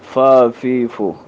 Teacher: لیکن ہونٹ کے شکم میں، ہونٹ کے پیٹ میں آپ اس بات کا خیال رکھیں گے کہ ہونٹ کا تر حصہ آپ اسے لگائیں گے. ہونٹ کا یعنی نچلے ہونٹ کا تر حصہ جب آپ اس سے لگائیں گے، اس سے ادا ہوتا ہے فا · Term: فا کا مخرج